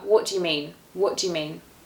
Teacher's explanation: Remember that you becomes more of a schwa sound, so a ya. What do you mean?